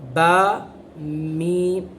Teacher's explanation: اطباق کے شفتین ہونٹوں کو بند کر لینا، با میم دونوں میں ہونٹ بند ہو گئے